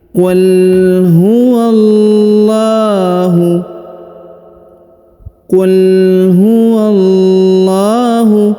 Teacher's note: Huruf huwa yang ini langsung sambung masuk ke huruf lam yang berharokat tasdid pada lafzul jalalah ya, ditahan dan ditekan lalu dipanjangkan dua harokat karena di atasnya terdapat tanda alif kecil.